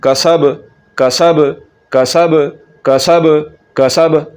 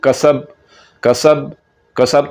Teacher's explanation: बा को कलकले के साथ पढ़ना है और हरूफ कलकला जो होते हैं वो झटके के साथ पढ़े जाते हैं